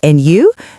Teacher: Notice the rising intonation on and you? This shows she's genuinely interested.